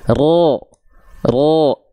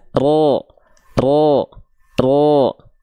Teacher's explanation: kalau huruf tebal ketika fathah vokal O dia tidak senyum